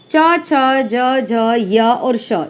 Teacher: उच्चारण करते समय जीवा अग्र कठोर तालु को स्पर्श करता है। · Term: तालव्य व्यंजन